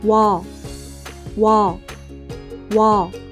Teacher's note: These vowels start with the 우, sound.